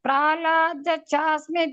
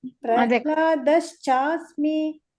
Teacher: ಶಚ ಎರಡು ಕೇಳಬೇಕು ಚ ಅಂತ ಕೇಳಬೇಕು